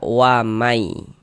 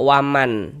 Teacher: Bunyi nun sukunnya ini dimasukkan ke huruf ya, melebur ke huruf ya. Sehingga kita baca wamai. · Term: idgham bighunah